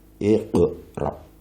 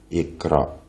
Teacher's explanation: Contohnya untuk huruf qaf seperti lafal iqra. Qaf yang diharokati sukun asli ini harus dibaca memantul, iqra. Tidak boleh hanya sekedar ikra, tapi harus iqra. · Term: qalqalah sughra